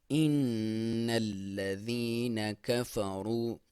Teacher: ان الذین کفروا، نون کے اوپر نون مشدد اور میم مشدد، یعنی نون پہ شد ہو یا میم پہ شد ہو تو یہاں پہ غنہ کیا جاتا ہے، اور اس کو غنہ یعنی ناک میں سے آواز نکالی جاتی ہے، اور 1 الف کے برابر اس کو آپ نے کھینچنا ہوتا ہے۔